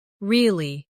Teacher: Now say, really? With a falling tone to show you don't believe someone.